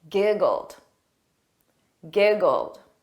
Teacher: notice that e d is pronounced as a very soft D